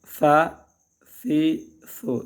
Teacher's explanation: ثا ثی ثو، سیٹی کی آواز بالکل نہیں ہے. سیٹی کی آواز آئے تو غلط